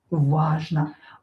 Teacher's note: О not stressed pronounce as а.